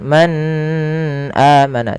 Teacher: nun sukun bertemu dengan huruf hamzah cara membacanya nunnya dijelaskan dengan jelas Suara nunnya Man amana tidak boleh ditahan Man amana tidak tapi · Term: izhar